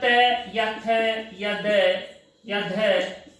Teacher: हमारी जो जिह्वा है वो हमारे दांतों से टच होती है, दांतों को स्पर्श करती है, इसलिए इनका उच्चारण स्थान दंतः कहा जाता है।